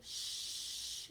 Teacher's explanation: sh if we put our hand here and we say shh we can feel there's no vibration here in our throats which means that shh is a voiceless sound